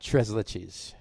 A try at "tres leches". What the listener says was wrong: tres leches. Leches. Not leeches.